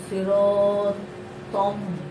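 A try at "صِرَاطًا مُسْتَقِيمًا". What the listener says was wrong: সিরাতাম, গুণনা তো করতে হবে।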